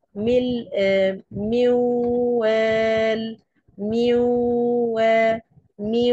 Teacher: طيب ده الادغام الكامل الادغام الناقص ذهاب ذات الحرب ويتبقى صفته يعني صوت النون الساكنه بيختفي تماما ولكن بيتبقى الصفه اللي هي الغنه زي ايه من من وفي صوت نون سامعينه ما فيش صوت